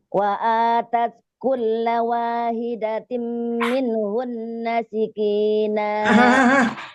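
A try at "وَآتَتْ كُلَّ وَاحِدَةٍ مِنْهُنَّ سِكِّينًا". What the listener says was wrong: Udah bilang siki, bertasdid kok balik lagi siki lagi. Bukan sikina, sik.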